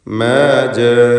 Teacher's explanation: മാ ജാഅനാ, ഇതിലുള്ള ജാഅന എന്ന പദത്തിലെ ദീർഘം മദ് മുത്തസിൽ വാജിബാണ്. നിർബന്ധമായും അലിഫിനെ 4-5 ഹറക്കത്തിൻ്റെ അളവിൽ ദീർഘിപ്പിക്കണം